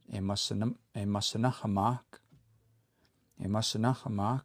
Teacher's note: This next one here, us but not you. the A is longer and that K is a little bit more prominent.